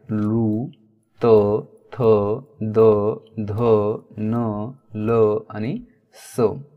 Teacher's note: जी दातांना प्रभावित करतात किंवा दातांचा उपयोग त्या वर्णांचा उच्चार करण्यासाठी होतो, म्हणून त्यांना दंत्यवर्ण म्हणतात.